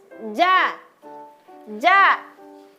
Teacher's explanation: Huruf jim itu cara mengucapkannya dia dekat sekali dengan langit-langit. Langit-langit di atas.